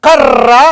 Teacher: కర్ర అన్నప్పుడు ఈ నాలుకవై దంత మూలాన్ని కొడుతుంది చూడండి కర్ర అన్నప్పుడు కొడుతుంది గట్టిగా కొడుతుంది గట్టిగా కొడుతుందండి రంపం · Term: తాడిత ప్రయత్నం